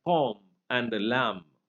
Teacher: B is also another sound that is dropped, from words like palm and lamb.